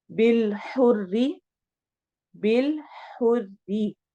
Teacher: را کو باریک پڑھیں گے کسرہ کی وجہ سے، زیر کی وجہ سے